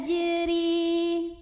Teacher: bacanya tipis ringan tanpa harus mengangkat pangkal lidah kita